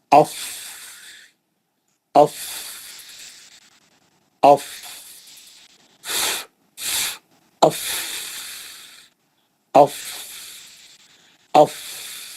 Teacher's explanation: अफ है ना जब आप अफ अब आवाज नहीं निकालना वह जो हवा निकल रही दांतों के बीच में से